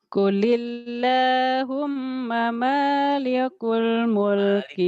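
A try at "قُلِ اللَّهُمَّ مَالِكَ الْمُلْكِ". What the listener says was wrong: Malikal. Malikal bukan malikul.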